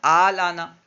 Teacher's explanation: ال آنا تھا تو دوسرے حمزے کو ہم نے ما قبل حرف، یعنی حمزہ، ما قبل میں بھی حمزہ تھا تو اس حمزہ پر، یعنی اس سے پہلے جو حمزہ تھا اس حمزہ پر کیونکہ زبر تھا اس لیے ہم نے دوسرے حمزے کو الف سے بدلا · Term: ابدال